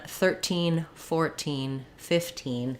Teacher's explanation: If I'm counting though, 13, 14, 15, the stress is still on the teen, but I'm going to have secondary stress on the number.